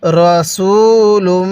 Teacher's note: সিনের মধ্যে এক আলিফ টান দিবেন